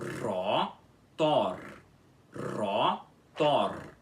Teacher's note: Rotor, rotor, com os dois R's enrolados